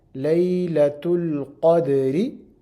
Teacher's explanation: We're pronouncing Ra light because it has a kasra on it.